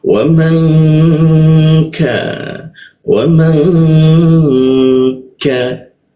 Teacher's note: Kita dengungkan N-nya itu berubah jadi eng. Eng ng kita dengungkan di mana di huruf K dia ditahan dua ketukan ya dengungnya. · Di huruf ka dia, ditahan dua ketukan ya dengungnya. · Kita dengungkan, n-nya itu berubah jadi ang.